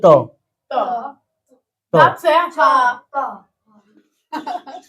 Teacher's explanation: त पूरा दांत में ही सट रहा है पूरा दांत में